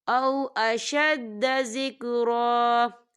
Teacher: وقف کی صورت میں ایک زبر پڑھا جائے گا، دو زبر نہیں پڑھے جائیں گے